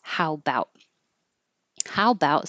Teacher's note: you can almost always get rid of that little a and just make it how about